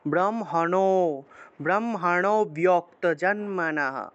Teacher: নোতে গিয়ে একটা টান দিলে অটোমেটিকভাবে একটা অ এর মতো উচ্চারণ আসে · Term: লুপ্ত অ